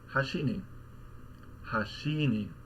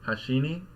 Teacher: You Peak at the end of the word and you drop back down on the particle and that's how you can tell it's accented on the last · if the accent is on the last Mora what that means because it's accented is that immediately after the accent pitch has to decrease dramatically